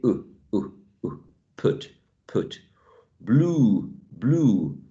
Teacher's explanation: When you are producing oo, your lips are shaped as in a circle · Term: rounded sounds